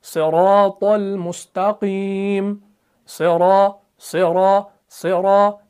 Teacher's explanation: जब भी सौद के नीचे जेर आती है तो कोई डिफरेंस देखने को नहीं मिलता। सौद वैसा का वैसा ही रहता है। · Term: सिफत इतबाक